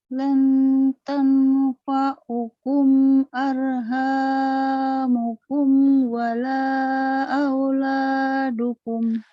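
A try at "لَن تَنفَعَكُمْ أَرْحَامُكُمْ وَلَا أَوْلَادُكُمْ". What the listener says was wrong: Lan tanfa'akum, bukan fa'ukum ya. Lan tanfa'akum arhamukum wala auladukum.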